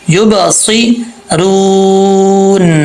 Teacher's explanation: سواد بھی حروف مستعلیہ میں سے ہے، اس کو پر پڑھا جائے گا ، یب صیرون، را کے آگے واو ہے، واو ساکن ہے،